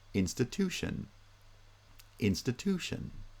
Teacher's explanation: In institution, stress is still on the first and third syllables, but this time primary stress is the third syllable and secondary stress is on the first syllable